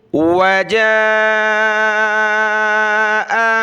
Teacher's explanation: جیم کے اوپر یہ مد ہے تو اس کو ہم نے کھینچا